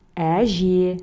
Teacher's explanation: Әже – мягкое слово, потому что в нем присутствуют мягкие гласные звуки.